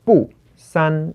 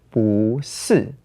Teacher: whenever you pair it with a fourth tone together, bù becomes bú So this is why we have here "bù sān" in the original tone, but "bú sì" in the changed tone.